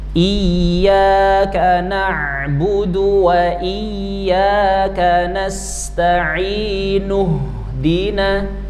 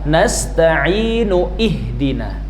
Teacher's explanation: Bukan hamzah qot melainkan hamzah wa wasol. Jadi kalau disambung hilanglah hamzahnya